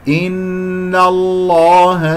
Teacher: النون الثانية مفتوحة قبل اسم الجلال الله تفخم من غير أن أفخم النون